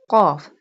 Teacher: Qaf pronounced from the root of the tongue touching the soft part of the palate.